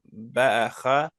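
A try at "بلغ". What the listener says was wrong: Read lam properly.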